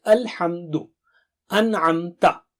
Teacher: جب میم ساکنہ کے بعد کوئی دوسرا حرف آئے تو میم کو صاف پڑھیں گے